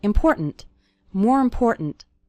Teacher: the word more kind of runs into the word important and the last syllable of important kind of gets reduced